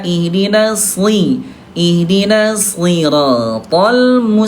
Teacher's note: huruf shad dia tetap tebal walaupun kasrah